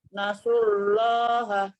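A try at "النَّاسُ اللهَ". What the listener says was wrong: Nah, sekarang su-nya kita sempurnakan dulu Bu. Nasullaha. Su-nya dimonyongkan. Su baru kita tarik ke huruf lam. Nasullaha.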